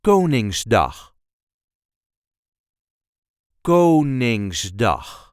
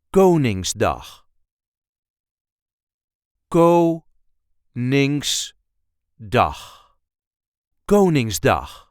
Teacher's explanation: The first syllable gets the emphasis.